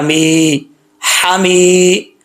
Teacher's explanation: میم کے بعد یا ہے، ایک الف کی مقدار اس کو لمبا کیا جائے گا